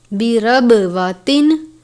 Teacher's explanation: بربواتن، با پر قلقلہ کرتے ہیں، قلقلہ کے حروف کو واضح کر کے پڑھتے ہیں، برب، رب نہیں پڑھنا بلکہ برب پڑھنا ہے، با کو زیادہ ظاہر کرنا ہے۔ بربواتن، تنوین ہے، اس کے بعد حمزہ ہے، حمزہ حروف حلقی میں سے ہے، اظہار کا قاعدہ لگتا ہے، یعنی تنوین پر غنہ نہیں کریں گے